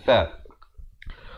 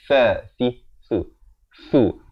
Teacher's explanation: Hujung lidah kita ini keluarkan di antara 2 gigi atas dan bawah menyentuh gigi atas